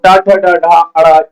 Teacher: ट ठ ड ढ ण ये मूर्धा से उच्चारण होते हैं। यानी मूर्धा से ट ठ ड ढ ण ये बच्चों आपके मूर्धा से आते हैं।